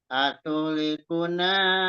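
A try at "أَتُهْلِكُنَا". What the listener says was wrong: Atuhnya kecepatan, Pak. Atulikuna kecepatan. Atuh itu kan rokhawah, dialirkan haknya, hak sukunnya. Atuhlikuna, atuhlikuna.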